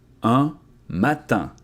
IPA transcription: œ̃ matɛ̃